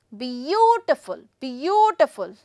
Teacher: Like beautiful, three syllables are there. But where am I going to put the stress? The stress would be on again the first one.